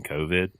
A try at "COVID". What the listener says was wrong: It's kind of like you're breaking it down into 2 words. COVID.